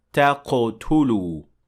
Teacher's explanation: Next is the word تقتلوا, and in this word we see قلقلة, because قاف in this case has sukun, so it has to receive قلقلة, and we say تقتلوا, not تقتلوا.